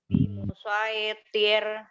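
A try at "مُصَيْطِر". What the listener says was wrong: Huruf to-nya berubah jadi huruf ta. Jadi to-nya tetap tebal.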